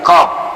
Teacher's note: Qaf ini cara kita menyebutkan qaf itu tempatnya itu di pangkal tenggorokan. Pangkal tenggorokan bagian atas.